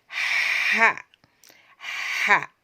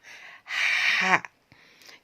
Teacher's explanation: H yang keluar dari tenggorokan bagian tengah